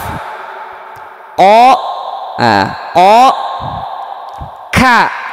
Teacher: pangkal lidah, yakni sebelah bawah sedikit dari tempat keluar huruf qaf. Di situ ada huruf kaf.